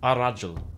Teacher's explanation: the L sound, assimilates to the following letter. So al-rajul becomes ar-rajul.